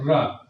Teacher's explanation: जब आप र का उच्चारण करते हैं तो जिह्वा ऊपर जाकर रगड़ते हुए लोटती है। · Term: लुंठित